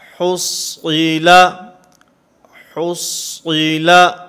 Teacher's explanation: صاد کو پر پڑھیں گے، ہا کو بھی باریک پڑھیں گے، لام کو بھی باریک پڑھیں گے